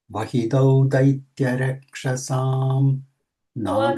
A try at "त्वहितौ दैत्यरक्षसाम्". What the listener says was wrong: त्वहितौ not वहितो त्वहितौ Devanam cha hite yuktastu tvahitau daitya rakshasa.